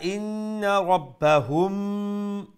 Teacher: so we make a nasal sound, the ikhfa here. Why? Because after the mim sakin there is a letter ba.